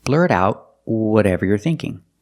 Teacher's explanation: The T in out is a stop T because it's before a consonant.